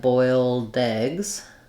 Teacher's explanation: It just links together and the D and the eh of eggs go together.